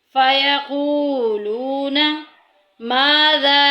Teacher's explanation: फ़यक़ूलूना माज़ा, यहाँ पे देखें मद्दे मुनफ़सिल आ गई, क्योंकि हमज़ा जो है वो दूसरे हर्फ में है। मुनफसिल को हम 2-2.5 अलिफ के बराबर लंबा करेंगे